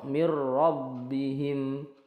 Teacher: masuk ke ro tanpa dengung nunnya itu dianggap tidak ada tidak dibaca langsung ke mirbihim WA sama tadi sudah dijelaskan ya sama ulaika